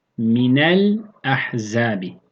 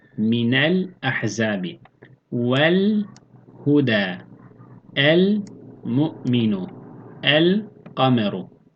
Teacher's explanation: Yani lam tariften sonra kameri harflerden biri gelirse İzhar-ı Kameriye olur. Yani bu durumda lam harfi cezimli olarak okunmuş olur. İdgam edilmez.